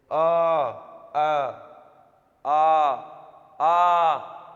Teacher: जिह्वा जो है कहीं पर टच नहीं करती और सीधा कंठ से, कंठ में वाइब्रेशन करके और वहीं से निकालती है, जैसे आ, कहीं पर जिह्वा टच नहीं हो रही, सीधा कंठ से निकल रही है ध्वनि। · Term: कंठ वर्णों